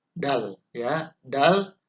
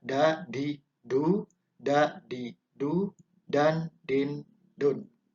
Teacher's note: Dal itu bisa direpresentasikan sebagai huruf D dari suaranya. Nah, tempat keluarnya huruf dal atau makhraj berada di titik yang sama seperti huruf ta, ya, yaitu di ujung lidah belakang gusi atas. Ta dan dal itu berdekatan tempat keluarnya huruf atau makhrajnya.